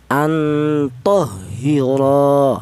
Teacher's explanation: maka ro ini dibaca mad thobi'i yaitu dipanjangkan dua ketukan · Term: mad tabi'i